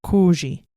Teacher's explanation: If it is preceded by an omicron, it produces a diphthong that sounds like a long O